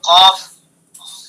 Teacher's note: اور قاف کی جو صفات ہے جس کو ہم جانتے ہیں فی الحال، اس کی صفت یہ ہے کہ اس کو پر کر کے پڑھتے ہیں، موٹا کر کے، منہ بھر کے پڑھتے ہیں قاف